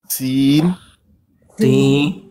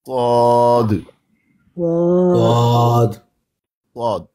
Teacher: جہاں سے سین ادا ہوتا ہے وہاں سے ہی صاد ادا ہوتا ہے۔ فرق یہ ہے کہ سین کو فلیٹ پڑھا جاتا ہے، صاد کو مفخم یعنی منہ بھر کے پڑھا جاتا ہے